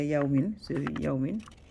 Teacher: idgham with ghunna, meaning you're still gonna have a nasal sound · So that's why the meme is still belong to the idgham with ghunna, because it's a nasal sound later. That's so you're gonna drop the noon and take the meme, but you're still gonna have nasal sound.